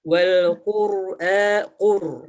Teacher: Wal qur'a qur, qafnya terbaca dengan jelas u, tebal u, qari'u. Huruf qaf keluar dari pangkal lidah.